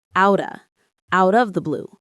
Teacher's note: In natural American English, the T in out often becomes a soft D sound, and the words link together. Outa. Out of the blue.